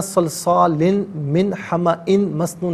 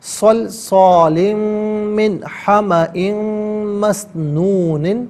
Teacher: اب یہاں پر صلصال میں آپ دیکھیں لام کے نیچے 2 زیر کی تنوین ہے، اسے من کی میم کے ساتھ ملائیں گے، اور حمأ میں حمزہ کے نیچے 2 زیر کی تنوین ہے، اسے مسنون کی میم کے ساتھ ملائیں گے۔ دونوں مقامات میں میم کی آواز کو غنّے کے ساتھ ادا کیا جائے گا